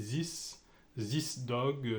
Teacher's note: les Français mettent un Z pour le TH